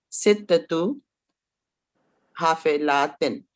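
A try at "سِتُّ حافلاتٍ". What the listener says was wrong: Sittu. Without the time marbuta. Sittu.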